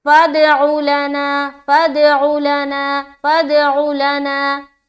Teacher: قلقلہ بھی کرنا ہے اور عین کو صاف اور واضح طور پر اس کی جو نکلنے کی جگہ ہے اس کے مخرج کے ساتھ نکالنا ہے